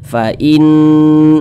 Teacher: Ghunnah musyaddadah cara bacanya itu ya dighunnahkan. Nah, dighunnahkan itu didengungkan. Jadi suaranya itu kita tahan, kita panjangkan sejenak.